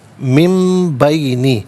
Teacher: نون ساکن کو میم سے چینج کر کے میم کی آواز کو غنے کے ساتھ ادا کریں گے